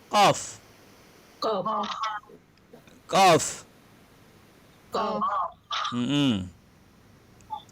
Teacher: qaf makhrajnya berada di lisan. Lisan berada di pangkal lisan, kemudian kita naik ke atas sedikit.